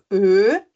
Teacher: do o a gente faz o formato do o e o som que a gente tira é o E então fica e e no u o som que a gente · Lembram que o formato da boca é o formato da letra mesmo, mas o som que a gente tira é outro, né? Do O, a gente faz o formato do O e o som que a gente tira é o E, então fica Ö. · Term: o tremar, O tremado